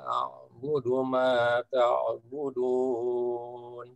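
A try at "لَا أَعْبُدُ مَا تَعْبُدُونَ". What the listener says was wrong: Baik, nampaknya huruf A-nya masih dekat ke bunyi ain ya. La a'budu. Ya, tadi sedikit saja di huruf hamzah yang bertemu dengan ain itu masih dekat ke bunyi ain sehingga a-nya tadi terdengarnya huruf ain.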